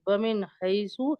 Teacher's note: تو یہ یہاں پہ نون ساکن ہے، اور نون ساکن کے بعد حروف حلقی میں سے ہا آ رہا ہے، تو یہاں پہ ظاہر کر کے پڑھیں گے ومن حیثو. اور یہاں پہ یعلین ہو رہا ہے جزم.